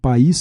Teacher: país tem duas sílabas, pa-ís, porque é um hiato, duas vogais em sílabas separadas.